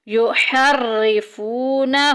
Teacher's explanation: ہو میں وہ الٹی پیش آ گئی، ایک الف کے برابر لمبا کریں گے